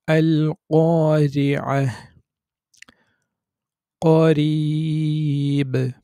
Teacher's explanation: যদি রা হরফে জের থাকে, তখন আমরা রা বারিক করে পড়ি। যেমন আল ক্বারিআহ, তো এখানে রি, রি এভাবে বাংলা র যেভাবে সেটাই হচ্ছে বারিক।